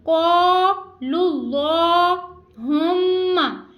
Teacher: میم شدت کا غنہ ہم کر رہے ہیں اور اس کو ایک الف دو حرکات کے برابر کھینچ کے ادا کر رہے ہیں